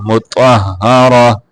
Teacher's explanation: یہ جو گول تا ہے اس کو وقف کی حالت میں ہا سے بدل دیتے ہیں